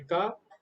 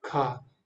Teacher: का बोलते समय हमको कम वायु की आवश्यकता होती है, का, लेकिन खा बोलते समय आपको ज्यादा वायु छोड़नी पड़ती है। का, खा, का, खा, गा, घा, गा, घा, है ना।